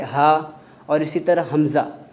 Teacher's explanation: ہا حمزہ ہم انتہائی ضروری ہے اس کو اس کے مخرج کے مطابق پڑھنا ہے۔ تو لہٰذا ہا اور حمزہ کا مخرج یہ ہے کہ حلق کا آخری حصہ ہے